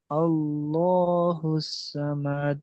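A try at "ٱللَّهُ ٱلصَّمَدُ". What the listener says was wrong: আবার সামাদ বলছেন, সমাদ। সমাদ, মুখটা গোল করেন।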